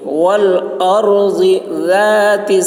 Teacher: ضاد کی آواز موٹی ہوگی